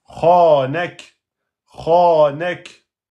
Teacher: Eh bien, c'est comme le ta soukoun. On bloque et on lâche et ça sort un petit souffle. Un souffle, pas un son, un souffle. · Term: kef soukoun